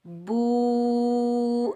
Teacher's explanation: बा के ऊपर पेश, आगे वाव साकिन है, ये वाव मद्दा है। बा को हम वाव साकिन के साथ मिलाएंगे और एक अलिफ की मिकदार खींच कर अदा करेंगे